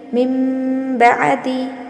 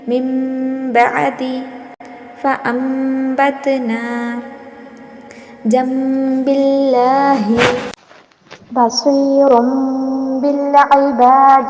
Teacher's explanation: جیسے مشق دیکھیں، من بعدی، یہاں پر دیکھیں نون ساکن کے بعد با ہے تو نون ساکن کی آواز نہیں آئیں گی بلکہ وہاں پر میم کی آواز آئیں گی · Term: اقلاب